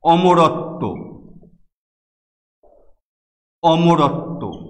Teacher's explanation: ত এখানে বফলার কারণে দুইবার উচ্চারিত হয়েছে।